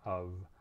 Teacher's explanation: we also have the word of which is spelled with an f but it's definitely a v sound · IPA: /v/